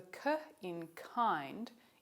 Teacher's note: the k in kind is aspirated